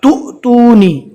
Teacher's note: حمزہ ہے وہ واو کی شکل میں آ گیا اور اس کے اوپر جزم ہے، لہٰذا اس کو پہلے والے حرف سے ملا کر جھٹکا دے کر پڑھیں گے۔ تُؤْتُونِ، اگر بدن کو تھوڑی سی حرکت دیں گے تو آسانی کے ساتھ ادا ہو جائے گا۔